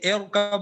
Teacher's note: باریک نہیں پڑھیں گے، پھر بھی موٹا پڑھیں گے کیونکہ کسرہ عارضی ہے